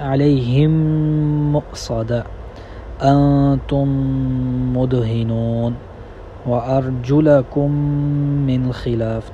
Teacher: میم ساکن اور میم متحرک کو ادغام اس میں کر دیا جائے گا، دونوں میمیں ایک کر دی جائیں گی، اور جو میم مشدد ہے اسی کی طرح، جس طرح میم مشدد میں غنہ کرتے ہیں اسی کی طرح اس میں بھی دوستو غنہ ہوگا۔